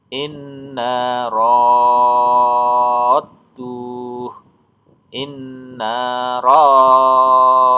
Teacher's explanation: Jadi rohnya panjang baru masuk huruf dal yang bertasdid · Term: mat lazim musaqqal kilmi